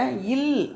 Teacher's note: மேல்வாய் பல்லின் அடியை நாக்கின் ஓரங்கள் தடித்து நெருங்குவதால் பிறக்கிறது